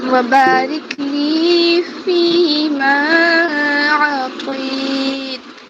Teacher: واو پر 1 حرکت ہے اور پھر با پر 2 حرکت کیونکہ الف مد آئی ہے